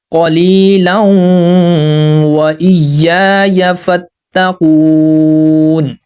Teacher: دو زبر کو ہم ملائیں گے واو کے ساتھ، اور واو کے اوپر ہم نے خود سے تشدید لگانا ہے۔ تو یہاں پر لام کو ہم نے واو کے ساتھ ملانا ہے تو غنہ بھی کرنا ہے، قلیلا وإیای فاتقون۔